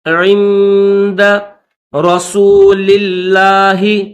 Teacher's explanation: اس لفظ اللہ کو باریک پڑھیں گے